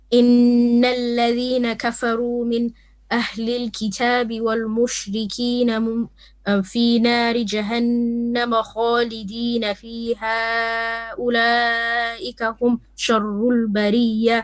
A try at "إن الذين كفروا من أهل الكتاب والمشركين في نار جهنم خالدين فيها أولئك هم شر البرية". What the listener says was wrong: You could have paused on fiha, but you're pausing beforehand. All I'm saying to you, if you pause, you have to apply the rule of pausing. So you cannot say, for example, Nari Jahannam Khalidin.